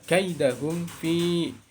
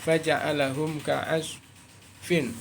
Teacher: Bacaan idhar syafawi adalah baca idhar artinya jelas, syafawi artinya bibir atau katupan dua bibir. Huruf yang keluar dari katupan dua bibir adalah huruf mim, yaitu huruf mim sukun. Jika mim sukun bertemu dengan selain huruf mim dan selain huruf ba, maka dibaca jelas atau idhar syafawi.